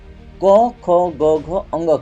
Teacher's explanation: क से लेके अंग तक ठीक है ये सभी क्या है कंठ ध्वन